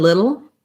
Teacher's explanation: they both have that syllabic or dark l sound